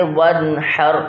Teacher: اب وانحر نہیں بلکہ وانحر، حلق کے درمیان سے ادا ہونے والا ہا ادا کیجیے گا